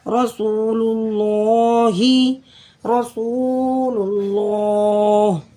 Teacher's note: لفظ اللہ سے پہلے لام کے اوپر پیش ہے، تو اس اللہ کے نام کو ہم موٹا پڑھیں گے۔